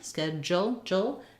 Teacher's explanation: d u in this word says a j sound